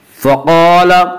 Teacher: फ़क़ाल अलिफ मद्दा, अलिफ हमेशा मद्दा होता है, अलिफ से पहले ज़बर होता है। अलिफ मद्दा को एक अलिफ के बराबर खींच कर पढ़ेंगे